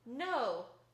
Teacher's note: the alveolar nasal as in no